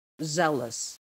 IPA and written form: ˈzeləs (ZEALOUS)